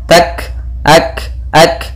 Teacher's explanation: ada kaf berharakat sukun, yaitu ada sifat hamas yang harus ditampakkan